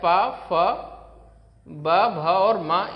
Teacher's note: यानी ये सारे के सारे वर्ण कहां से बोले जाते हैं ओष्ठ से बोले जाते हैं